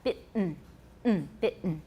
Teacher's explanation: In both British and American, the T in bitten is accompanied by a glottal stop.